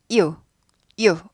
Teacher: 이 할 때는 이거 한 박자예요. 근데 이 플러스 우 해서 유가 될 때는 이건 반박자예요. 이우 아니죠. 이우 하면 두 박자인데 얘는 이우가 아니라 합쳐서 유가 되잖아요.